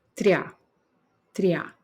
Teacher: dentro dessa sílaba tria o i sai menor do que o a então ele é a minha semivogal e o a é a vogal